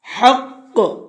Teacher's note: قاف کو ڈبل پڑھنا ہے کیونکہ قاف کے اوپر تشدید ہے، اور تشدید والا حرف چاہے وہاں پر ہم وقف کریں یا نہ کریں دونوں صورتوں میں ڈبل پڑھا جاتا ہے۔